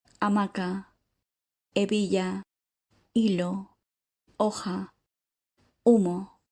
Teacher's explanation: Next, we have the consonant “hache”, which is silent